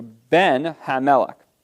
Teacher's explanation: the first noun loses its primary stress and becomes proclitic to the second noun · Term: loss of stress